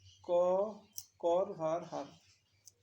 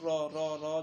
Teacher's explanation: যখন উচ্চারণ করো 2-3 বার বাধা খায় তোমার জিহ্বাটা, এটা এই রটা হচ্ছে কম্পিত ব্যঞ্জন ধ্বনির উদাহরণ।